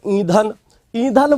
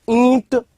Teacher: ईधन बोलने में बिल्कुल भी नासिका में हवा नहीं जा रही और ईंट बोलने में नासिका में वाइब्रेशन सा हो रहा है